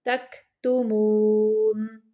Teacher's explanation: تم پہ میم کو ظاہر کرنا ہے، اظہار شفوی کا قاعدہ ہے